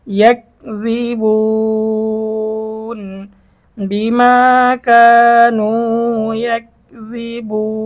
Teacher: পেশের পরে ওয়াও সাকিন মদের হরফ, তারপরে ওকফ 3 আলিফ টান হবে